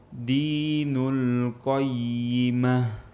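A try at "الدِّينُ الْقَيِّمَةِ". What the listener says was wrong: Ha, lamnya masih tebal ketika sukun. Terlebih lagi sebelumnya berharokat dhammah. Nul, bukan. Nul.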